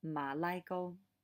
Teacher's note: the ma is a low rising and then the ligo is uh high tones